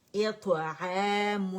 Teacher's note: حمزہ باریک ہے اس کو موٹا نہیں کریں گے اور ای کی ساؤنڈ انگلش لیٹر ای کی ساؤنڈ کے ساتھ ہم نے اس کی کسرہ ادا کرنی ہے. طا میں ہم نے قلقلہ ہیوی والے اطعام میم کو میں نے پکڑا پھر گولائے دی اور نون سکون پہ میں نے ان رول کر دیا کیونکہ تنوین چھپی ہے نا نون سکون آئے گا.